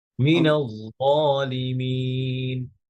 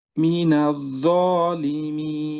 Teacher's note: আরো একটু মোটা করবেন, কারণ ইতবাকের ভাব